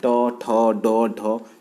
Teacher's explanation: जो ट वर्ग के सभी वर्ण जो होते हैं वो मूर्धन्य होते हैं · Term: मूर्धन्य व्यंजन